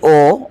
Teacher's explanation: मतलब अ प्लस उ से बना ओ। और ओ उच्चारित हो रहा है कंठ प्लस ओष्ठ से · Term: कंठोष्